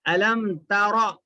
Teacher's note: را پہ زبر ہے, پیش ہے, تو را کو کیا کرتے, موٹا پڑھتے